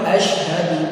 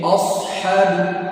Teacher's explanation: ketika mengucapkan huruf shin menjadi huruf shad ya, padahal jauh. Contoh, yang harusnya asyhadu menjadi ashadu, padahal harusnya asyhadu alla, jadi ashadu ketika shin sukun.